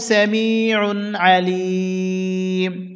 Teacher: অকফের সময় মিম সাকিন হবে এখানে টানতে হবে তিন আলিফ